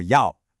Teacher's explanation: It has that distinctive falling then rising quality. The second yao is a sharp falling fourth tone. · The other big one is a weak fourth tone on yao. It shouldn't be a gentle yao. It needs to be a decisive, sharp yao. Think of it like a command. · The second, 要, is a sharp, falling fourth tone.